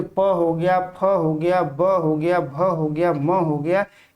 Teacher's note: पांचवा हो गया ओष्ठ ध्वनि। जिनका उच्चारण दोनों होठों के मिलने से होता है उनको ओष्ठ ध्वनि कहा जाता है, जैसे प हो गया, फ हो गया, ब हो गया, भ हो गया, म हो गया, ये सभी ओष्ठ ध्वनि के अंतर्गत आते हैं।